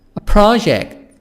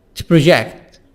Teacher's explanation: change the stress from the first syllable for nouns to the second syllable for verbs